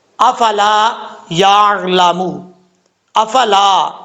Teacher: لام کے آگے الف ہے، ایک الف کی مقدار لمبا کر کے پڑھا جائے گا، آگے یا کے بعد عین ہے، عین کو پڑھتے وقت عین ساکن ہے، قلقلہ نہیں کرنا یا حمزہ نہیں پڑھنا، اگر آپ جھٹکا دیں گے تو حمزہ پڑھا جائے گا، اور اگر پڑھیں گے یا تو یہ زبر پڑھا جائے گا، قلقلہ ہو جائے گا، ایسا نہیں کرنا.